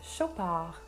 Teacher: I'm not sure if this brand is really French or Swiss, but I do know that the D should be silent.